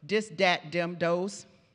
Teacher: D for the voice th in pre-vocalic position so at the beginning of a word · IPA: d/ð